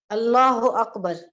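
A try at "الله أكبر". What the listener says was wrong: अल्लाहु अकबर नहीं, अल्लाहु अकबर। अल्लाह, अल्लाह को जरा पूरे पढ़े, अल्लाहु अकबर।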